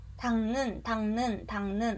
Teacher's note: 쌍기역인데 그대로 기역으로 대표음으로 변하고 그 다음에 이응으로 비음화가 되죠.